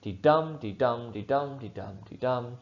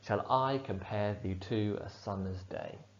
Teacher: 10 syllables in every line in a pattern of unstressed stressed syllable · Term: iambic pentameter